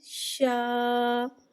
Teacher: شین کو ایک الف یعنی 3 حرکات کے برابر کھینچ کے پڑھیں گے۔ شین میں تفشی والی سیٹی کو ظاہر کر کے پڑھیں گے۔ الف کو بغیر کھینچے پڑھیں گے، الف سے پہلے زبر آ رہا ہے، الف مدہ ہو رہا ہے، الف مدہ کو ایک الف یعنی 2 حرکات کے برابر کھینچ کے پڑھیں گے اور زبر کو منہ کھول کے ادا کریں گے شین، الف زبر شا۔